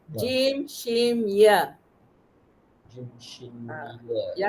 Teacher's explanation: lidah dinaikkan ke lelangit keras. Tengah lidah.